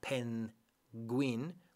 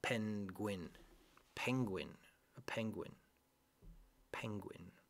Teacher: this one penguin the difficult thing here in penguin is that we do not really separate the N and the G when you pronounce penguin it's not pen Gwynne like in Spanish pen Queen it's penguin